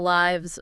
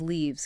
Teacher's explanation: Lives with a short I sound is for the verb like he lives in Brazil. And leaves with a long e sound can be either the plural of leaf or the verb to leave.